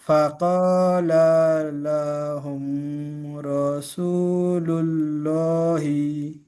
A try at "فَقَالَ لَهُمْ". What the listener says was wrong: জি, এখানে লামের দুটো লাম যেটা আছে, লাম জবর লা, তারপরে ফের লাম জবর লা, এই দুটো লাম কিন্তু টান নেই কোনোটা, ঠিক আছে? তাহলে কি পড়বেন? ফাকালা লাহুম।